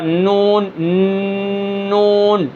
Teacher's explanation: یہ ثنایا سامنے والے دو دانت، اس کے ساتھ ایک اور کھڑا ہے، اور اس کے ساتھ یہ جو نکیلا ہے، ان کے ساتھ جب ہم زبان کی نوک کو لگائیں گے وہاں سے نون، اور اوپر جو مسوڑے ہیں، ٹھیک ہے، جڑ ہیں، جڑوں کے جو مسوڑے ہیں وہاں پر جب زبان لگے گی تو وہاں سے نون ادا ہوگا